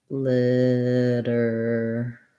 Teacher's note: This letter A is a schwa